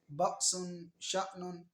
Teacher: اور حمزہ ساکن میں جھٹکا زیادہ ہونا ہے